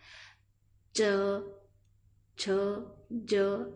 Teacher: आपकी जिह्वा का जो अग्रभाग है वो तालु पर टच होगा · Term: तालु वाला